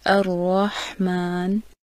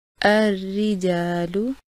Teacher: را پر جب زبر یا پیش ہو تو را موٹا پڑھا جاتا ہے